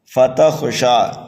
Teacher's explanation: شین کو 1 الف کے برابر کھینچ کر کے پڑھنا ہے، یہاں پر بھی وقف بالسکون ہو رہا ہے، دیکھیے کھڑا زبر آ رہا ہے، اور ملا کر بھی آپ پڑھیں گے تب بھی 1 الف کے برابر کھینچنا ہے۔